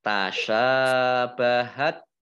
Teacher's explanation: Tasyabahat shin fathah alif mat tobi'i panjang 2 harokat. Nah, kemudian ini tak sukun, ya, tak sukun itu membacanya agak diberi es sedikit gitu ya.